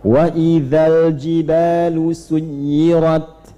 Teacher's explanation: alif lamnya jangan dipantulkan, mengalir. Bukan wa idzal, tidak, jangan dipantulkan, mengalir.